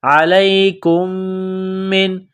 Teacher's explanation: علیکم من، میم ساکن کے بعد دوسری میم ہے جو مشدد ہے تو کاف کو میم کے ساتھ ملانا ہے، میم میں غنہ کریں گے، آواز ناک میں چھپائیں گے